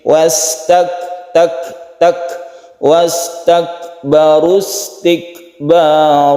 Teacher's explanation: Wastakbaru istikbara, wastak kaf itu ada hamesnya. Wastak bukan qalqalah, bukan pula dia tidak menimbulkan apa-apa, tapi dia itu menimbulkan suara yang khas ya, yang kecil, meleleh sedikit.